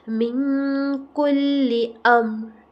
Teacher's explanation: یہاں پہ دیکھیں نون ساکن کے بعد کیا آ گیا، کاف ہے حرف اخفا میں سے، ٹھیک ہے. یہاں پہ ہم کریں گے اخفا، نون کی آواز کو چھپائیں گے ناک کے اندر.